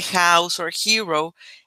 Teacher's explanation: la H es aspirada Es decir se pronuncia como una J en español